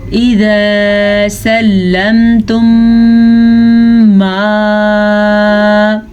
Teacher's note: میم ساکن کے بعد میم متحرک آ چکی ہے تو ہم دونوں میموں کو آپس میں ملا کے غننے کے ساتھ پڑھیں گے، اسے ادغام شفوی کا قاعدہ کہتے ہیں.